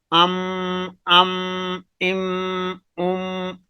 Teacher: جو ہے نا خواہ میم متحرک ہو یا میم مشدد ہو، ان میں غنہ کی صفت پائی جاتی ہے، تو اس غنہ کی صفت ہونے کی وجہ سے ناک میں آواز جا رہی ہے